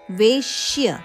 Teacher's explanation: ವೇ ದೀರ್ಘ, ಆನಂತರ ವೇಯ ಮೇಲೆ ಆಘಾತ ಇದೆ, ವೇಶ್ಯ ಶಕ್ಕೆ ಯದ ಜೋಡಣೆ ಒತ್ತಕ್ಷರ ಆದ ಕಾರಣ ವೇಶ್ಯ.